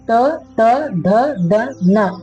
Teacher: ನಮ್ಮ ನಾಲಿಗೆ ಮೇಲ್ಗಡೆ ಇರತಕ್ಕಂತಹ ಬಾಚಿ ಹಲ್ಲುಗಳ ಹಿಂದುಗಡೆ ಹೋಗಿ ಸ್ಪರ್ಶ ಮಾಡುತ್ತೆ · ತ ತ ಧ ದ ನ ಈ ಅಕ್ಷರಗಳನ್ನ ಉಚ್ಚಾರ ಮಾಡ್ಬೇಕಾದ್ರೆ ನಮ್ಮ ನಾಲಿಗೆ ಮೇಲ್ಗಡೆ ಇರ್ತಕ್ಕಂಥ ಬಾಚಿ ಹಲ್ಲುಗಳ ಹಿಂದ್ಗಡೆ ಹೋಗಿ ಸ್ಪರ್ಶ ಮಾಡುತ್ತೆ. ಹಾಗಾಗಿ ಈ ಒಂದು ಅಕ್ಷರಗಳನ್ನ ದಂತೆ ಅಕ್ಷರಗಳಂತೇಳಿ ಕರಿತೀವಿ. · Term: ದಂತ್ಯ ಅಕ್ಷರಗಳು